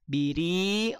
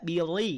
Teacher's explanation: rnya tipis karena dia harakat kasrah tidak bir tapi biri tidak bi tidak perlu dinaikkan dulu pangkal